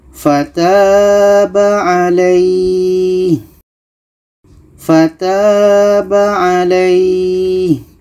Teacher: Kita panjangkan lai ini minimal 2 harakat baru matikan huruf yang terakhir. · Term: mad lain, Mad Layyin